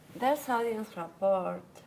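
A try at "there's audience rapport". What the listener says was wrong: You're saying a T. How do we pronounce the T? Correct. Because your Spanish brain says what you see.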